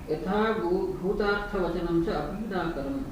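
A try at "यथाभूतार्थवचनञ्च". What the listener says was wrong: No, we should not give emphasis on Bhuta. Yatha Bhutartha. Yatha Bhutam. We should not split those things. Yatha Bhuta, we should not split. Yatha Bhuta.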